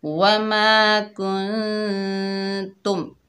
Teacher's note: میم ساکن کے بعد 26 حروفوں میں سے تا آ رہا ہے تو میم کا اظہار ہوگا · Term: اظہار شفوی